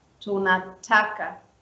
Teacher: Tuna stays lower, and then the pronunciation is on ta, and then it goes down again, ka